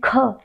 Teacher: प्राण वायु जब बाहर निकल रही है तो कंठ पर दबाव अधिक बना है, ये इसलिए ये महाप्राण है